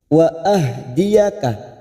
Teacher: hak sukun harus bertenaga kita membaca biar tidak terdengar ha